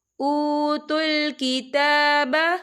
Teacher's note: تا کے اوپر کھڑی حرکات ہے تو ہم اسے 2 یا 3 حرکت کے برابر کھینچ کے پڑھیں گے